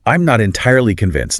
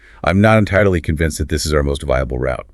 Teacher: you pair the hedged words with a firm, definitive downward inflection